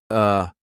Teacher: It's just neutral. Nothing happens with the mouth. Nothing happens with the tongue. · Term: schwah